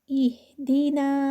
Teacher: ای sound آئے گی، ای کی آواز دینی ہے، اے دینا نہیں ہے